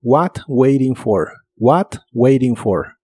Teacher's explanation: la t de Waiting se puede pronunciar como r